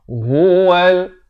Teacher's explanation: ha ni pula makhrajnya di pangkal kerongkong.